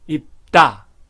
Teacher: 입과 코를 막기 때문에 다가 따가 됩니다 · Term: 경음화